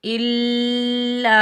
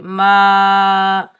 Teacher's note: یہ الف مدہ ہے، اس کو ہم ایک الف کی مقدار کھینچ کر ادا کریں گے